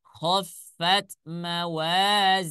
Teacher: kalau dia dibaca wasal maka dia menjadi Mad Silah qasirah sedangkan ketika waqaf atau menghentikan bacaan tidak dibaca panjang melainkan disukunkan saja